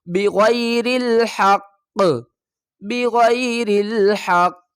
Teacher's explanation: قاف کو ہم نے وقف کی صورت میں ساکن پڑھا ہے اور اب ہم قاف کے اوپر قلقلہ کریں گے